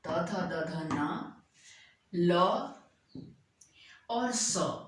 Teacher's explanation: ये दांत से उच्चारित होते हैं, अर्थात जीभ जो है दांत को छूती है। मेन रोल जो है ना जिह्वा का है।